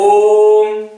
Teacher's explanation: ऐसा स्वर जिसके उच्चारण में तीन मात्रा का समय लगे · अगर ओम का उच्चारण हम करें ओम, 3 मात्रा का समय लग रहा है, इसलिए इसको हम लोग त्रिमात्रिक स्वर या प्लुत स्वर कहते हैं।